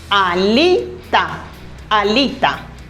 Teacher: The stressed syllable is li.